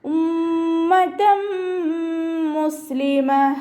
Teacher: തെൻവീനിന് ശേഷം ഇദാം ബ്യൗനയുടെ അക്ഷരമായിട്ടുള്ള മീമാണ് വന്നിട്ടുള്ളത്. തെൻവീനിനുള്ള ന്യൂനിനെ മീമിലേക്ക് ലയിപ്പിച്ച ഉന്നയോടുകൂടി ഓതിക്കൊടുക്കുക.